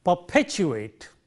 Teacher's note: the first one is unaspirated, the second one is aspirated because of the positioning of the stresses there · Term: aspirated P